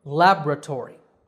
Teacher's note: laboratory with the stress on the first syllable